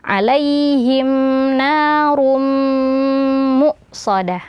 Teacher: tanwin bertemu dengan mim hukumnya adalah idgam bhunah ya maka ee tanwinnya dimasukkan ke huruf mim dan di e dengan disertai aliran suara dari rongga hidung dan dipanjangkan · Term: idgham bi gunnah